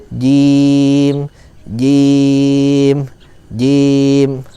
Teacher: Hati-hati saat jim tidak boleh ada hembusan cim cim, dia harus jelas.